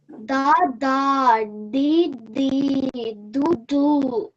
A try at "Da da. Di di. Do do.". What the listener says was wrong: Okay, good.